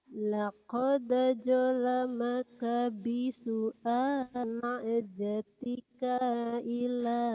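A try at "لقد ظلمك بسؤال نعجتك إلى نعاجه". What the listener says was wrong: Kannya pendek. Nih dengerin. Dengerin. Laqad zalamaka bi. Laqad zalamaka bisu'ali na'jatika ila. Na'jatika ila ni'ajihi. Kannya pendek, jangan dipanjangin.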